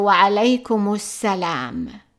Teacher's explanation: Notice that we are not pronouncing the alif and we are not pronouncing the lam, and that's because this is son article.